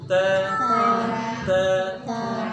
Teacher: ujung lidahnya temukan dengan gusi di pangkal gigi